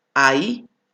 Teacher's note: Por lo tanto, significa que es un diptongo decreciente, porque comienza con una vocal abierta y termina con una vocal cerrada.